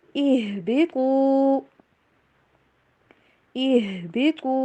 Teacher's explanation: ہا کی آواز کرنی چاہیے اور تو کو موٹا